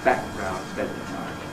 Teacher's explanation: we run them together to make a single long plosive of the kind that comes in Italian or in Japanese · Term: gemination